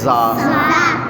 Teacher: اس میں سی ٹی کی آواز بھی بند کی تھی، زبان اوپر لگائی تھی. زا میں سی ٹی کی آواز بند نہیں کرنی، بلکہ زا میں سی ٹی کی آواز دینی ہے